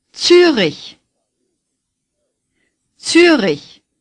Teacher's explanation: the R is gargled